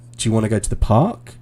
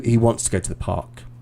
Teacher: the intonation goes up because i'm asking you a question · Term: rising intonation